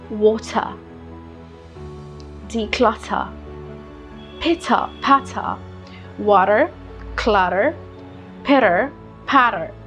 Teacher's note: in British, try to keep your tongue as in front. Let the R drop.